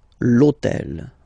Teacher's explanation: in French we don't pronounce H, okay, so basically the first sound of the word is the vowel O, okay, so for the same reason, needs to disappear.